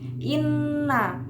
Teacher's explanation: ghunnah musyadadah dibaca menekan dan mendengung